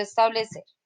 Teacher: Pero según su acento, en donde lleva el mayor esfuerzo de voz, quiere decir que establecer es una palabra que. ¿Dónde lleva el acento establecer? En ser.